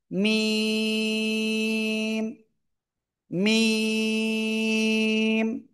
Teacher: দুই ঠোঁটের শুকনো জায়গা থেকে অক্ষরটা উচ্চারণ হবে, এবং 4 লিপ টানিয়ে উচ্চারণ করব।